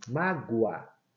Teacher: Repare, quando eu pronuncio, quando eu falo mágoa, mágoa, esse O, ele assume o som do U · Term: semivogal